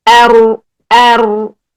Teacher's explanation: جب رو ساکن کے اوپر آئیں گے تو ہم پیچھے سے زبان کی جڑ کو اوپر اٹھا لیں گے جس سے ہمارا منہ بھر جائے گا. آواز جو ہے یہاں سے ٹکر کھا کر پھر باہر نکلے گی تو وہ موٹی سی آواز نکلے گی.